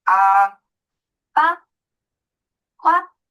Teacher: এই ফার্স্ট টোনকে বলে flat tone, এটা ফ্ল্যাট ভাবে যাবে ভয়েসটা